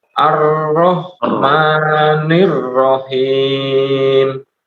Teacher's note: huruf ro-nya coba ditebalkan lagi.